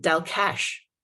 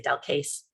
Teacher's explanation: since it's next to an I, it's actually a sh sound